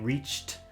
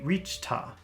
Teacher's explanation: If they reached a lot of times people have a problem pronouncing reached because there are a lot of complicated sounds, but here we're lucky because the next word is a, and instead of saying reached you can say reached-a, and that's much easier